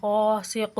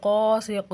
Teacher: یہ اوپر والا قاعدہ اس کے ساتھ بھی لاگو ہوگا، ٹھیک ہے. اور یہ جو قاف ہے حروف قلقلہ ہے، وقف کی صورت میں اس کو تھوڑا ہلا کر پڑھیں گے